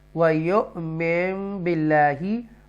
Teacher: یہاں پر نون ساکنہ کے بعد بار ہے اس لیے اقلاب ہوگا